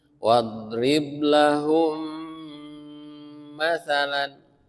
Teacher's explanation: Ada gunahnya. Ada gunah mim bertemu mim. Ditahan.